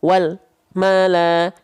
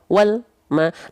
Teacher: yang salah atau dengan cara yang EE e tidak sempurna yaitu dengan menjeda atau memutus suara lamnya